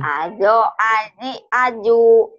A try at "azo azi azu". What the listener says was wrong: Nah, kebiasaan siapa? Tuh. Kebiasaan manjang ini. Azo Azi Azu. Azo Azi Azu. Cepat.